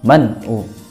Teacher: nun mati bertemu dengan ain, maka dibaca jelas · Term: izhar